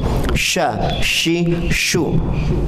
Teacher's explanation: Ditempelkan ke langit-langit, dan sifatnya itu tafasyi. Tafasyi itu berarti bergemuruh di dalam mulut kemudian menyembur. · sya itu ada di tengah-tengah lidah